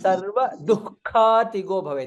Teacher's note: ದು ವಿಸರ್ಗ followed by ಕ ಮಹಾಪ್ರಾಣ